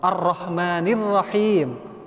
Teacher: Ar-Rahmannya itu tebal, nirrahimnya baru tarkik tipis.